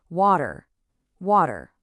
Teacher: Well, it's because that upcoming R sound is already pulling the tongue backward. That means the little tap sound for the D, the flap, doesn't happen right up behind your teeth like a normal D would. Nope, it happens a little further back on the roof of your mouth, just before the tongue fully pulls back into that ER shape.